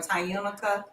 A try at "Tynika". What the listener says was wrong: The U is not pronounced.